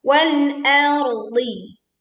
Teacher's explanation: Wal l, bukan r tapi l. Hamzahnya tipis, ro-nya tebal, dodnya tebal